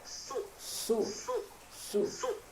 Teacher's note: bagian bawah gigi seri bagian bawah kemudian ini misalkan adalah lidah lidah kita ujungnya ini kita tempelkan di dinding seri kita bagian dalam tempelkan ujungnya saja Kemudian lidah bagian belakang itu diangkat ke atasnya jadi membacanya jadi tebal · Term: terangkatnya lidah bagian belakang